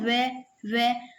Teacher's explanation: व दोनों होठों को मिलाने पर बोला जाता है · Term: ओष्ठय व्यंजन